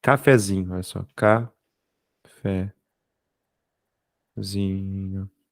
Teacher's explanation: a sílaba tônica não é mais o fé